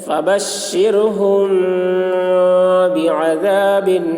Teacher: الف زبر ذا، بعذا، با دو زیر بن، بعذاب، فبشرهم بعذاب، میم ساکن کے بعد با آ رہا ہے اس لیے غنہ کے ساتھ اخفا ہوگا ، اس کو اخفاء شفوی کہتے ہیں۔ فبشرهم بعذاب، ادغام شفوی،